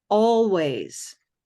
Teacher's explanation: dark L is going to sound like a vowel